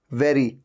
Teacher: और ये जो वेरी है, वेरी में भी आप देखिए, वी साउंड है ना, वेरी, ऊपर के दांत नीचे वाले लिप पे टच होते हैं